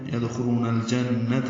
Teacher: یدخلون الجنہ، لام ساکن پہ اظہار ہوگا. جن، نون مشدد پہ غنہ ہے.